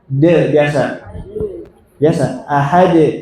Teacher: ketika bunyi de jangan pakai hamzah de, jangan ditekan, jangan. De biasa. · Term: qalqalah